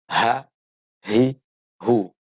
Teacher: Boleh juga dia ada ya karena ya nasab menisbatkan. Aqsal halqi, pangkal tenggorokan, yakni area tenggorokan paling bawah. Ha, hurufnya hamzah dan ha ketika dibaca a, i, u.